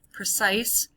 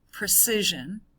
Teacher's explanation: Notice the vowel change there too. We go from a long I in precise to a short I in precision.